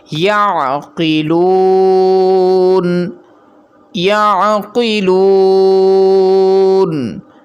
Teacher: قوف موٹے حروف میں سے ہے، اسی لیے یہاں پر اسے پر پڑھا جائے گا۔ اسی طرح اس واو کو ایک الف کے برابر کھینچ کر پڑھیں گے، کیونکہ یہاں واو مدہ ہے۔ واو مدہ کی پہچان یہ ہے کہ واو ساکن ہو، یعنی ایسا واو جس کے اوپر جزم پائی جائے، یہ واو ساکن کہلاتا ہے۔